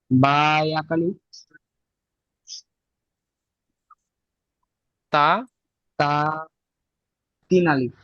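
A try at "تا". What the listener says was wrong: জি না তাও এক আলিফ টান হবে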